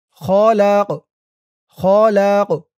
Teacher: এখানে কফটা কলকলার হরফ হয়ে গেছে, ধাক্কা দিয়ে পড়তে হবে।